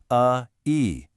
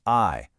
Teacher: What's absolutely crucial here is to begin with the correct throaty uh sound. From uh you're going to glide immediately into the smiling e sound u e. Now at speed it becomes i.